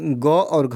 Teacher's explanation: जो क वर्ग होता है इसका उच्चारण स्थान कंठ से होता है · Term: कंठ व्यंजन